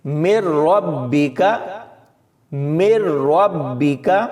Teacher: تو یہاں اس آیت میں یہ الفاظ دیکھیں، مِن رَبِّکَ، مِن رَبِّکَ، اس میں نون ساکن کے بعد را ہے، یعنی یہ حرف یرملون میں سے ہے، اور ہم نے پڑھا تھا کہ را اور لام پر غنہ نہیں کرنا، آرام سے پڑھیں گے، اور نون کو بالکل بھی نہیں پڑھنا، یعنی میم کو را کے ساتھ ملائیں گے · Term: ادغام